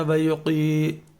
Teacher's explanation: قاف کو ہم نے جب پڑھنا ہے تو قاف کی آواز آنی چاہیے، بڑے قاف کی، اور اس کو ہم نے پر کرنا ہے